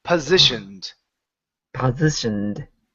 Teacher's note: Okay. Now, one thing you can do instead of saying po is switch it to a schwa.